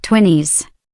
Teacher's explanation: in British English, they pronounce the T sound in 20s, while in American English, it's more like twinnies